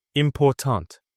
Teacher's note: The middle part is louder and longer. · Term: stressed syllable